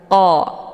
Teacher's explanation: letak posisi qf ini letaknya di Pangkal lidah dekat dengan anak tekak jadi saat melafazkan huruf qf ini yaitu pangkal lidahnya terangkat tersentuh · lidah dekat dengan anak tekak jadi saat melafazkan huruf qf ini yaitu pangkal lidahnya terangkat tersentuh dengan langit yang lunak